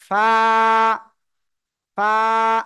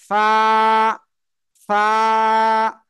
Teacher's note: সাথে নিচের ঠোঁটের পেট সামনের উপরের দুই দাঁতের আগার সাথে লাগিয়ে এক আলিফ টানিয়া হালকা বাতাস বের করিয়া উচ্চারণ করিতে হবে